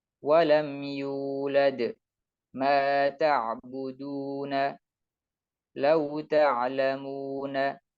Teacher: Jadi wawu sukun tetap dibaca dengan memonyongkan bibir sebagaimana dhammah, karena dhammah adalah wawu adalah induk dari dhammah, ummud dhammah.